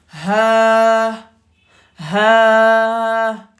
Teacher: Le ha, il y a plus d'air qui sort.